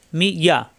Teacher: জিব্বার মাঝখানে উপরে তালুতে ইয়া